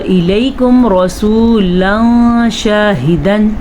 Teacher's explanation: نون ساکن یا تنوین کے بعد حروف اخفا میں سے اگر کوئی حرف آ جائے، یہاں پہ حروف اخفا میں سے شین ہے تو اس نون ساکن یا تنوین کو، ٹھیک ہے، نون ساکن یا تنوین کو کسی حد تک چھپا کے پڑھیں گے